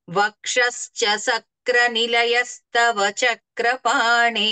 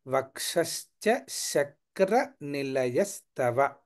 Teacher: వక్షస్ సక్ర అన్నట్లుగా వినబడుతోంది సక్ర కాకుండా శక్ర తాలవ్య శకారము